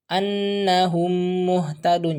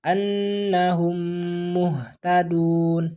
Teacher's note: nah jangan membacanya my pertama di idghomkan dimasukkan berarti hidup yang huruf mim pertama dimasukkan ke dalam huruf mim yang kedua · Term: Idgham Mimi